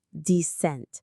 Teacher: Notice the stress is on the second syllable